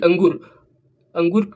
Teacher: ध्वनि जो है नाक से निकलता है और जोर से निकलता है · अंगुर में जब उच्चारण करेंगे तब इसका जो ध्वनि जो है जोर से निकलेगा और नाक से निकलेगा। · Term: अनुस्वार